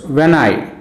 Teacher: when is unstressed i is stressed